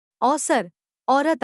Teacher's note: इसके उच्चारण में जीभ का पिछला भाग कुछ ऊपर उठ जाता है